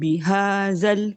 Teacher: جب ہم ملائیں گے لام کے ساتھ تو یہ ہمارا الف جو ہے زا والا ڈراپ ہو جائے گا